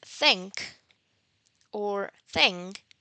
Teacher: the organs involved are the teeth. So that is why they are called dental fricative sounds. But in the first case, the first sound in the word think or thing, there is no vibration of the vocal cords. · there is no vibration of the vocal cords. That is why this sound is called voiceless dental fricative